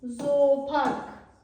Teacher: qoşa o söz ortasında gələndə ya uzanan O kimi tələffüz olunur. Məsəl üçün zoopark yazılıb olacaq zoopark.